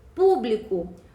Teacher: Público possui a antepenúltima sílaba tônica, portanto, trata-se de uma proparoxítona. E por esse motivo, essa palavra é acentuada.